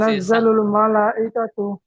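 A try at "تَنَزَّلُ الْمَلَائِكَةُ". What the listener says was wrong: জি, মালা, লামটি আর একটু বেশি করে টান দেন। কাপ টান দেননি, লাম টান হবে। তানাজ্জালুল মালা, এই লামটি টান হবে, কাপ টান হবে না।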